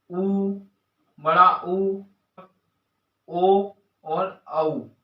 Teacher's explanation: जिन स्वरों के उच्चारण में ओंठ गोलाकार हो जाते हैं, वृत्त के समान ओंठ हो जाते हैं, उसे हम वृत्तमुखी कहते हैं।